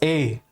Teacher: जीभ का फ्रंट भाग सक्रिय है